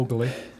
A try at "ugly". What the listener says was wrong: extra syllable in the word ugly. Ugly. Ugly. Ugly.